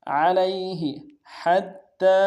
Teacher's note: ہا کو گہرائی سے ادا کرتے ہوئے تا کے سامنے لانا ہے، تا کے اوپر تشدید ہے، زور دیں گے، اگلے تا کے اوپر کھڑا زبر ہے، ایک مقدار میں کھینچیں گے.